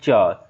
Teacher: च कहने पर देखिएगा तालु में आपका जीभ सट रहा है